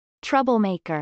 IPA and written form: trˈʌbəlmˌeɪkɚ (troublemaker)